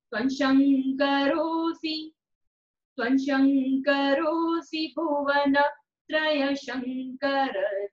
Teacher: जब श का उच्चारण करते हैं तब जीभ तालु को स्पर्श करती है, तो इसको हम तालव्य श कहते हैं।